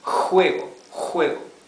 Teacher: Scratching the throat. It's not the exhalation of the H, the English H.